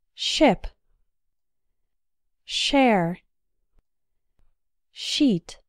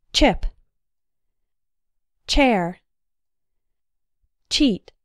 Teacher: the T sound is just shorter and more explosive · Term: CH sound, ch sound